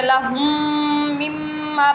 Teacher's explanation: اگر میم ساکن کے بعد میم آ جائے تو وہاں پر ادغام شفوی ہوگا، اور یہاں پہ ہم مدغم کر کے ادا کریں گے، لہم مما پڑھیں گے، ایک میم بنا کر پڑھیں گے، لہم، یوں نہیں پڑھنا ہم نے، لہم مما یوں نہیں پڑھنا ہم نے۔